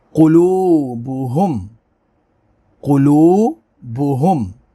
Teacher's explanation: قاف کو پر پڑھیں گے، واو ساکن سے پہلے پیش ہے، واو مدہ ہوگی